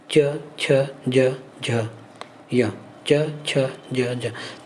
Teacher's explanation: च वर्ग का स्थान मुंह से तालु से होता है